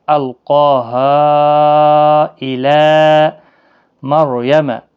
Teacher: را ساکن سے پہلے زبر ہے تو پور پڑھا جائے گا